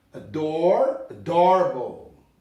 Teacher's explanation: a gente não pronuncia esses R's